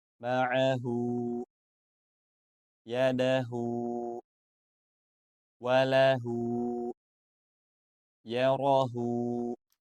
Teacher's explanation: ha yang berharakat damah diikuti wau kecil yang tidak berharakat atau bisa kita sebut dengan wau sukun maka dibaca panjang dua harakat